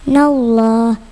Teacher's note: Lafaz Allah didahului fathah tebal bacanya. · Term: lam jalala tafkim